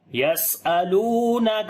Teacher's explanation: سین کے اوپر صفت ہمس کریں گے، سانس کو جاری کریں گے، سیٹی کی آواز بھی آئے گی